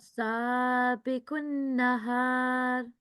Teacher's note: seen is followed by a blank alif, and it is acting here as alif maddiya. Okay, so 2-second elongation is required here.